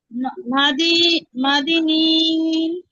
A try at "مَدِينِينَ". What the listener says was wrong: মাদি টান নাই।